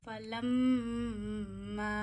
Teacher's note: जब भी मीम पे तशदीद आएगी, डब्ल्यू का साइन, तो मीम की आवाज़ नाक में ले जाके एक उंगली जितनी ठहराते हैं, इसे मीम पे तशदीद का गुन्ना कहते हैं.